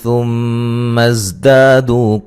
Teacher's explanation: زا کو زور سے سختی سے سیٹی سے ادا کریں گے